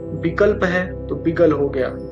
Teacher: अल्पप्राण व्यंजनों का, अघोष व्यंजनों का सघोषीकरण होने लगा। जैसे कि विकल्प है तो विगल हो गया।